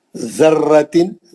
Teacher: ذرتن، ذا کو زبان لگانا. را کو اچھا سختی سے پڑھنا، زبر ہے موٹا پڑھنا.